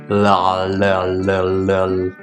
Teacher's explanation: The first phoneme being a clear L sound. That's the L sound we make when we bring our tongue up to the alveolar ridge and we actually flick it out.